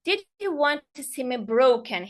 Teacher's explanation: Here rising tone because it's question and it sounds emotionally yes and challenging.